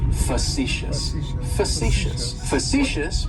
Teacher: that first syllable has that schwa